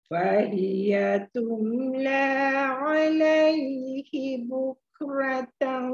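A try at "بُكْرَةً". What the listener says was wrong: Bukro, tebal. Bukro.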